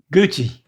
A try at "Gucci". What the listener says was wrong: There it is. He's got it.